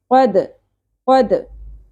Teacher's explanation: دال ساکن ہوگا تو یہاں پہ قلقلہ ہوگا